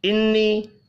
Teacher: نون مشدد پر غنہ کریں گے، چھوٹی مد کو 3 الف کے برابر کھینچ کر پڑھنا ہے